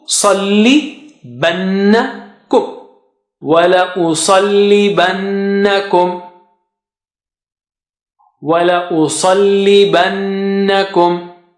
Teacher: Sa is very thick and high.